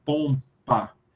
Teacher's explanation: de comodidade é melhor colocar um é uma bilabial também porque você já Fecha a boca para dizer o m e ela já tá fechada para produzir o beup